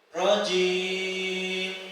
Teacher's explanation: di huruf mim tetap ada gunnahnya sedikit, tidak kemudian dihilangkan.